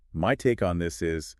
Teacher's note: try connecting the words take and on, so it sounds like one word